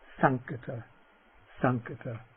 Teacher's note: That ṅ that comes before khata is the velar nasal.